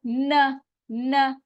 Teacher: जबान की टिप ऊपर के दांतों के मसूड़ों के साथ लगेगी